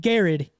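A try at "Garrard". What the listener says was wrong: Still shouldn't be how you pronounce it. There's another R in there.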